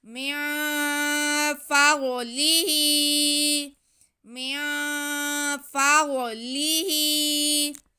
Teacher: ہا کے نیچے کھڑا زیر، تو ہا کو ہم ایک الف کے برابر کھینچ لیں گے